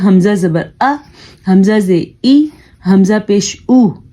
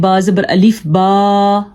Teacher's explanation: اس کو ہم الف زبر آ نہیں پڑھیں گے، ہم پڑھیں گے حمزہ زبر آ، حمزہ زیر ای، حمزہ پیش او، اتنا لمبا اس کی آواز کو نہیں کرنا کیونکہ یہ ان حرکات کی آواز بہت چھوٹی ہوتی ہے